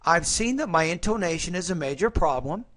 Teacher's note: my intonation after problem was rising because I was not done with the thought group